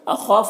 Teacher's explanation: خا حروف مستعلیہ میں سے پر پڑھیں گے اور الف مدہ ہے، ایک الف برابر کھینچیں گے.